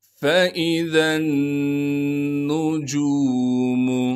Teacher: ज़ाल को नून से मिलाएंगे गुन्नह के साथ